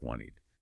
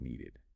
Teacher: It's almost physically impossible to say a T sound right after another T sound clearly, or a D after a D, without inserting that tiny little vowel sound, the E in between, to separate them.